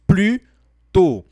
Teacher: a gente não pronuncia o S, tá? Nós falamos plus tôt.